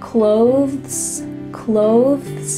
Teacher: When native speakers are speaking a little bit slower, they might add a th sound.